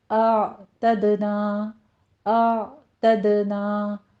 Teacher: پہلے حمزہ کی آواز آ کا ساؤنڈ، پیچھے عین کا ساؤنڈ لے کر آنا ہے وسط حلق سے، جس کو سٹاپ کرنا ہے، اس کے اوپر حرکت نہیں دینی کیونکہ آگے دال ہے جس کے اوپر ہم نے قلقلہ کرنا ہے، تو دونوں کو مکس نہیں کر دینا ہے آپ نے۔